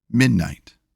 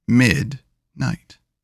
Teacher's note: The heavier stress is on mid, and the lighter stress is on night.